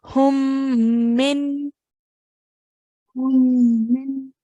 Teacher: Hang on the sound of the meme for a few seconds, for 2 seconds, and then carry on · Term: meme mushaddad